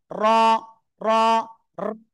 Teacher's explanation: র অক্ষর মোটা আওয়াজে পড়বো, 1 আলিফ টেনে পড়বো